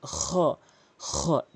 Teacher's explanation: খটি হলকের শেষ থেকে উচ্চারণ করতে হবে।